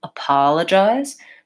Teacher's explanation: So I want a long syllable on pa. · where is the stress in this word and in this case it's short long short short